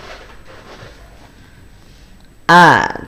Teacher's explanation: Hamzah itu keluar dari pangkal tenggorokan.